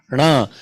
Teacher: When you say na, tongue is rolling up a little more and touching the cerebral.